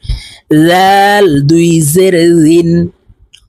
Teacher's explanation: জিহ্বার আগা থেকে এই জাল হরফের উচ্চারণ করতে হবে